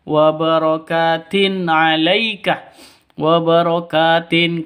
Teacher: ka panjang dua ketukan karena ada alif diawali dengan fathah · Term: mad thabi'i